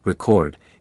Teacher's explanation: When stressed on the first syllable, record, it is a noun meaning documentation or accomplishment. When the stress falls on the second syllable, record, it is a verb meaning to write down or register.